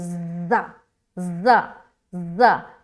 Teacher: ज़ा की जो अदायगी है ना, इसको हम सीटी नुमा निकालते हैं